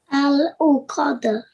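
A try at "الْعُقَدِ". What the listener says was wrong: Well done, mashallah. Very nicely recited.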